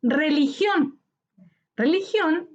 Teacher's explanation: Religión es una palabra aguda. Su sílaba tónica está en gión, última sílaba.